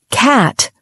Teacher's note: It has a wide-open A sound, unlike the tighter cat in British English.